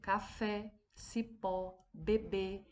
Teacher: a sílaba que foi pronunciada com mais força foi a última, então nós chamamos de oxítona.